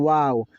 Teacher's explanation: टकराता नहीं है बल्कि पूरा का पूरा तरह से यह जो है ना होठ गोल होता है।